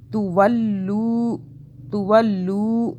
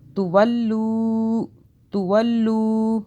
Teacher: واو ساکن ہے، یہاں پہ ہم کھینچ رہے ہیں اس کے پیچھے والے لام کو، یہاں مدہ ہو رہی ہے واو. ٹھیک ہے، واو ساکن مدہ ہو رہی ہے.